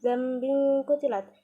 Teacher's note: tanwin bertemu dengan salah satu huruf ikhfa, yaitu qaf. Dibacanya samar.